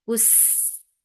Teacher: Sin will get sifa of rakhawa and safir, and it will be light